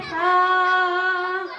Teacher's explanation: সায়ের মাখরাজ জিহবার আগা উপরের দাঁতে আগা লাগিয়ে বলতে হবে সা।